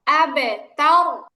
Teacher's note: আবে কলকলা, র হচ্ছে মোটা